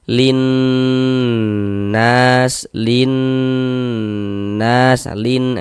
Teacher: Karena dia ghunah ya kita ghunahkan linnas. Nah, di bagian linnya itu suaranya itu kita tahan kita panjangkan sejenak.